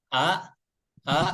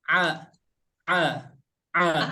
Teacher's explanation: untuk huruf Hamzah, tempat keluarnya dari pangkal tenggorokan. Kalau misalkan huruf Ain dari tengah tenggorokan ya, tengah tenggorokan.